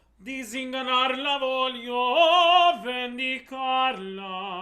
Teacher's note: make sure that S in disinganarla voglio is a Z sound